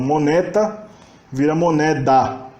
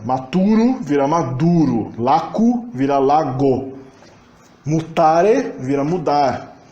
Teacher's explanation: a sonorização das consoantes surdas no meio da palavra, entre vogais medianas